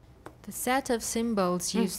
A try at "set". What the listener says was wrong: Set, not sat. Set.